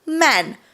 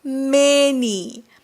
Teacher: एका शब्दाने पूर्ण आवाज बदलला ए चा आवाज चक्क इ झाला